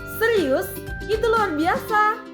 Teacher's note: menjawab kembali dengan nada yang tinggi dan antusias